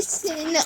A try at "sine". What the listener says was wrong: it's not SYN, it's SINE in mathematics, but it's pronounced sine. But like it's like shortened to SIN.